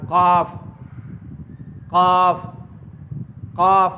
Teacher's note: काफ का मखर जुबान की जड़ और तालू